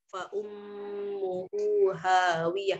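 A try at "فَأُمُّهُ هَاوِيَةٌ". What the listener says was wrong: Nah, hu-nya itu pendek. Hu-nya itu bacanya pendek, jangan dipanjangkan. Hu, jangan. Fa ummuhu langsung.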